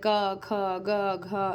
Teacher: क वर्ग जितने भी होते हैं दोस्तों ये कंठ से बोले जाते हैं। जैसे क, ख, ग, घ इनका उच्चारण स्थान कंठ होता है।